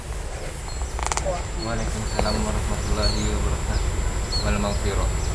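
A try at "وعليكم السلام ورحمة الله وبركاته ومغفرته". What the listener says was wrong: Wal Pakai wal atau apa? Pakai wal atau? Waalaikumsalam warahmatullahi wabarakatuh. Jangan pakai wal. Wa maghfirah.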